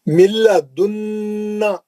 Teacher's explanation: نون ساکن کا ادغام بلا غنہ حرف لام